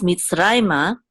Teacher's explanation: because the accent is on rai right here, this is where we'll have the emphasis of the word mitzrayma